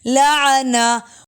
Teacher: گول تا وقف میں ہا کی ساؤنڈ دیتی ہے